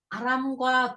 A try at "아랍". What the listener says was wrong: 이 아람이 아니고 아랍이거든요.